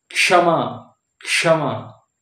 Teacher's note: तो ये जो आता है के एस एच, के से हो गया क, एस एच हो गया तालव्य श, मूर्धन्य श है ना। तो इसमें आधा क और मूर्धन्य श मिला के क्ष होता है